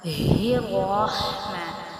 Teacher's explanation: اب اس ہا کو ہم جو ہے نا حلق سے ادا کرتے ہیں، حروف حلقی میں سے ہے۔ رحمن، را کو ہم نے پر پڑھنا ہے اور ہا کو باریک پڑھنا ہے۔